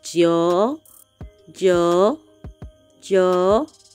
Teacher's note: it has a falling and the rising tone